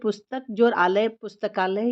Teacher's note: यानी अ और आ मिलकर आ होता है